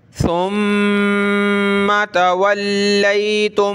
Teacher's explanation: میم پہ تشدید غنہ کریں گے